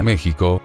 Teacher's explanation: ya todo mundo decía México, con el sonido de la J